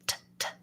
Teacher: It just is a burst of air and it stops. If I go from the T and I just naturally let my tongue drop, it'll be in the S position.